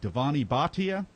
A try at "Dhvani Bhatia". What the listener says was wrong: So the V is pronounced like a W, so Dhvani Bhatia.